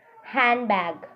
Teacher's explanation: Most American English speakers do not pronounce D in handbag. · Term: deletion